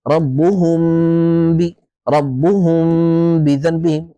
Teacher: ودائما هذا ال الاخفاء تتبعه او تصاحبه عفوا غنه بمقدار حركتين